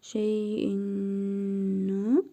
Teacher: tənvindəki nun hərfini burnumuzda tələffüz edərək bir əlif miqdarı uzadırıq. Və bu nun hərfini isə şəddəli tələffüz edirik.